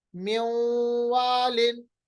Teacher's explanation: ادغام بھی ہو گیا، نون کی آواز بھی برقرار رہی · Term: ادغام بغنہ